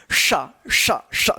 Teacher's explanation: और तालव्य श जो है ना ऊपर जीभ जो है ना तालु में जाकर सटेगा तब उसका उच्चारण निकलता है